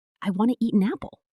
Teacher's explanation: The T at the end of eat links right into the an. It just rolls off the tongue so naturally.